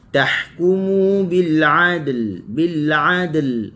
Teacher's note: huruf ha, halkum tengah, lepaskan suara dan angin